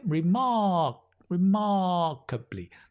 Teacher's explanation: the ma gets a little bit longer